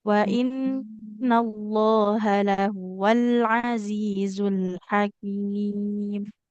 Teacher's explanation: huruf lamnya tidak boleh ini ya memantul